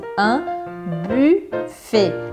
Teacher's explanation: Un buffet, e aí presta atenção nesse U, que não é buffet com I, também não é buffet com U igual em português, é aquele U com biquinho, bem do francês mesmo. Un buffet, tem que fazer esse biquinho e imaginar que você está falando um I, mas sem abrir a boca.